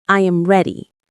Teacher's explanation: The voice falls naturally at the end.